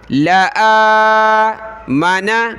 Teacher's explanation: اگلی آیت دیکھیں وَلَوْ شَاءَ شین پر مدے کھینچیں گے اس کو رَبُّكَ را کو با کے ساتھ ملانا را کو موٹا کریں گے با کے اوپر شد ہے اس وجہ سے اس کو جمع کر پڑھنا ہے رَبُّكَ لَآمَنَ لام کو نہیں کھینچنا یہ کھڑا زبر کس پر ہے حمزہ پر ہے